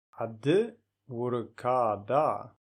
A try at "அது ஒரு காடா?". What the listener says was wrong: Not kada. There's no tongue between the teeth. It's kada, not kada.